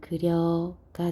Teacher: 단모음 이가, 단모음 우가 반모음 이, 반모음 오로 교체됐다라고 이야기합니다. 그래서 이것을 교체, 그 중에서도 반모음화라고 이야기한다는 걸 꼭 기억하세요.